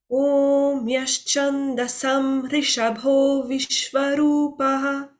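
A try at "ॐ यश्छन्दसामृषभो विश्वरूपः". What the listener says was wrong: The dirga, the Sam, you did it short. Do it one more time and just pay attention on that. Sam Rishabho.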